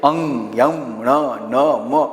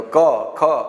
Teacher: એમ નીકળે મોઢામાંથી નીકળે જ્યારે આ નાસિકામાંથી આ વ્યંજન બોલીએ ત્યારે નાસિકામાંથી નાસિકા એટલે નાક નાકમાંથી ગરમ વાયુ બહાર નીકળતો હોય છે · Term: અનુનાસિક